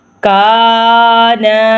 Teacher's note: پہلے حروف پہ زبر، دوسرا حروف خالی الف ہے، تو اس لیے کا اور نون کو بھی لمبا کریں گے